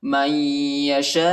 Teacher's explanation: شین کے بعد جو الف ہے، اس الف پر بڑا مد ہے، اس کو تقریباً 3-4 سیکنڈ تک کھینچیں گے